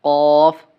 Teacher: জিহ্বার গোড়া তার বরাবর উপরে তালুর সঙ্গে লাগাইয়া